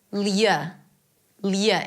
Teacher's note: It's an L sound, a ya, and a schwa.